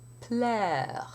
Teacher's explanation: the position of the second consonant is always in place before the lips come together for the p